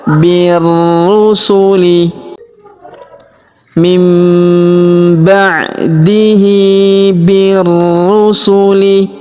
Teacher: masuk ke huruf ru yang berharakat tasydid. Kita tahan dan kita tekan ya.